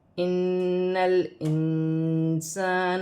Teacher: نون مشدد میں غنہ کیا جائے گا، نون کو لام کے ساتھ ملا کر پڑھا جائے گا، پھر نون ساکن کو حمزہ کے ساتھ ملا کر پڑھا جائے گا۔